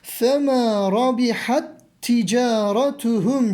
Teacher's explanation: ikisini birleştirerek okuyoruz sanki aralarında ayrım yok da bir şeddenin ikisini birleştirdiği hali imiş gibi telaffuz ediyoruz